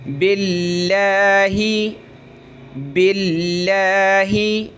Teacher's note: ये लफ्ज़ अल्लाह ये पहले जो ज़ेर है बा पर तो पतला करेंगे